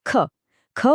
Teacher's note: મહાપ્રાણ એમાં શ્વાસનો મોટો ધક્કો બહાર આવે છે